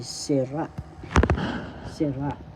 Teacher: sira first syllable si second syllable ra the second syllable has the accent